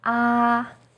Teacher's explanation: first tone is high and steady